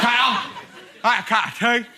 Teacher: So lazy that he's dispensed with labial fricatives.